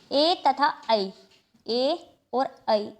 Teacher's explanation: जो ए का उच्चारण स्थान है ये हमारा होता है कंठ तालव्य। ए तथा ऐ, ए और ऐ इन दोनों को ही कंठ तालव्य में शामिल किया गया है।